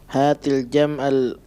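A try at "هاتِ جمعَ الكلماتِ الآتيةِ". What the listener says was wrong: La taqul hatil.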